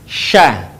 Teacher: Huruf sya keluar dengan menyentuhkan tengah lidah kita dengan langit-langit. Diucapkan, mengalir udaranya, dan mengalir pula nafasnya.